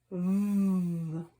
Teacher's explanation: We can hear our voice box vibrate, and we can feel our voice box vibrate when we say the sound for V.